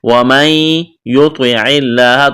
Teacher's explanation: ومن، یہاں دیکھیں نون ساکن کے بعد یا ہے، یہاں پر ادغام کریں گے، یعنی نون کا یا میں ادغام کرنا ہے، اس نون کو نہیں پڑھیں گے۔ ومن یطع نہیں پڑھیں گے ومن یطع اللہ، غنہ بھی کریں گے۔